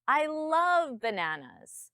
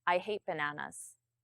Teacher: My tone comes up on love.